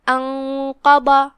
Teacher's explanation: پھر یہاں حرف الضاد ہے جو کہ ضاد کی ادائیگی زبان کی کروٹ اور اوپر کی داڑھوں کی جڑ سے ہے، لہذا اس کا دھیان رہے اور ہم اسے بھاری آواز میں بھی پڑھیں گے کیونکہ ضاد حروف تفخیم میں سے ہے. · پھر حرف القاف ہے، قاف حروف الاخفاء میں سے ہے، لہذا ہم نون کو بغیر ظاہر کیے ہوئے لیکن غنہ سے، دھیان رہے غنہ بھاری ہو کیونکہ قاف حروف تفخیم میں سے ہے، تو ہم یہ غنہ کو بھاری کر کے یہ کلمہ کی ادائیگی کریں گے.